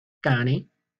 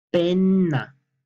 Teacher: Alargamos más la consonante que está doble. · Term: consonantes dobles